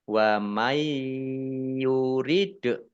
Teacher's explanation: nun sukun bertemu dengan huruf ya, bacaan idgham bi gunnah, masuk dengan mendengung, yaitu mendengung ya, ditahan 2 harokat